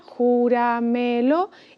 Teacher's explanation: empezamos a contar desde detrás y la vocal tónica está antes de la penúltima.